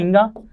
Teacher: अनुनासिक क्या होते हैं, प्रत्येक वर्ग के पंचमाक्षर होते हैं और इनके उच्चारण में हमें नाक और मुंह दोनों की आवश्यकता पड़ती है